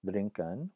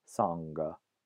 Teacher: So in Old English and Middle English, you had this sound, ng, but it existed only as an allophone of the alveolar or dental N sound. So when that N sound appeared before a velar stop, a ka or a ga, then the N will be pronounced as a velar ng, right? So the Old English word to drink was drinken with an ng before the ka, and the Old English word for song was songa, with the N before an ng before a g sound. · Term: velar nasal